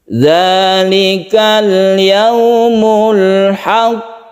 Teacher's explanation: Untuk yang qaf yang bertasydid ini qalqalah kubra, tapi khusus untuk yang bertasydid ini harus kita tekan dulu ke qafnya baru kita tasydidkan